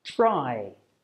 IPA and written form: traɪ (try)